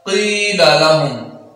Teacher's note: قاف کو نیچے کی طرف دو حرکات کے برابر کھینچیں گے کیونکہ یا ساکن ہے، اور جب یا ساکن ہو اور اس سے ما قبل حرف زیر والا ہو کیونکہ قاف کے نیچے زیر ہے، اب قاف کو دو حرکات کے برابر نیچے کو کھینچیں گے۔